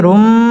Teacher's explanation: এটা হচ্ছে ইদগামে বা গুন্না, গুন্না সহ মিলিয়ে পড়তে হবে।